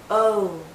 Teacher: more open o think of the letter o o o but as we come to the end of this vow sound our lips become even tighter it finishes actually with a slight ooh sound o do you see how my lips start larger and then